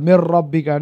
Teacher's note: নুন এখানে সাইলেন্ট হয়ে যাচ্ছে, মানে ইদগাম হয়ে যাচ্ছে।